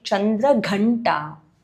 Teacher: Gha needs to be stressed when you say Chandraghanta.